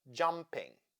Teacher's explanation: Jump is the root, ing is the suffix. Therefore, we stress jump and have jumping. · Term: stress the root